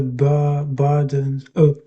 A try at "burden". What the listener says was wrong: I think you pretty much had it there. That's it. That's the word.